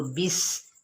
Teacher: سین کی سیٹی کو واضح کریں گے